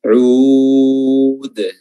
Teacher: murni tidak ada suara hidung di situ